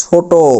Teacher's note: এই ট যখন আমরা উচ্চারণ করব টর পরবর্তীতে একটা অ সাউন্ড আসতেছে ট মানে মানে একটা অ।